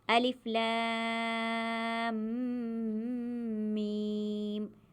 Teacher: پڑھتے ہوئے لام کو لمبا کرنا ہے، میم پر گننا کرنا ہے۔ میم کو پڑھنے سے پہلے ہی گننا کرنا ہے۔ · میم کی جو آواز ناک میں گھومے گی اسے گننا کہتے ہیں۔ یہاں میم کو پڑھتے وقت گننا اس لیے بھی کرنا ہے کیونکہ میم پر تشدید ہے، یہ بھی گننے کی ایک قسم ہے۔